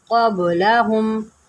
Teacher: با حروف قلقلہ میں سے یہاں پر قلقلہ کریں